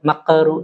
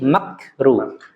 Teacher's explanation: Huruf kaf jangan dikolkolah